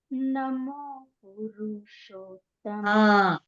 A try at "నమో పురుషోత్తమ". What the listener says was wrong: పురుషోత్తమ అని కాకుండా నమో పురుషోత్తమ. పురు అనకే పురు అనక రూకి దీర్ఘం ఇవ్వక నమో పురుషోత్తమ చాలు. ఆ నమో అంటే రెండు నమోలు లేవు కాబట్టి ఒక నమోకి ఏం చేస్తామంటే రెండు డ్రాగ్ చేస్తాం నమోని. నమో నమో నమో అంటున్నాం అంతే.